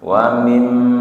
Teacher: Jadi 2 harokat saja, tidak lebih. Wa mim bertasdid, gunah, dengung. Wa mim tahan 2 atau 3 harokat. Wa mimma setelah dengung panjang, ada mad tabi'i.